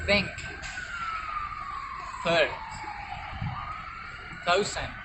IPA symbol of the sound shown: θ